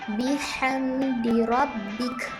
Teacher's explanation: mim sukun bertemu dengan huruf dal dibaca dengan jelas tanpa dengung